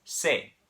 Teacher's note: In Spanish, it's not say, it's se. It's just one single vowel sound.